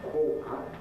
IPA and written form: ˈkwɔːʔə (quarter)